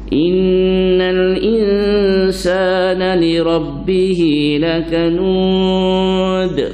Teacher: qalqalah kubra, mendetak dia agak lambat sedikit daripada sughra